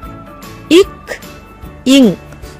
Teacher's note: மெய் எழுத்துக்கள் இக், இங் ஆகிய 2 மெய்களும் நாவின் முதற்பகுதி, அன்னத்தின் அடிப்பகுதியை பொருந்துவதால் பிறக்கின்றன